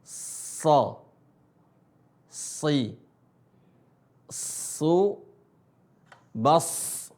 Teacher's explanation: Ujung lisan ketemu gigi seri bawah, tapi bedanya adalah so-nya dibaca tebal. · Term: huruf so